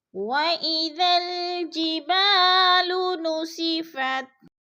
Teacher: خالی سے پہلے با کے اوپر زبر ہے تو الف مدہ، الف مدہ کو ہم نے 1 الف 2 حرکات کے برابر کھینچ کر یعنی لمبا کر کے پڑھنا ہے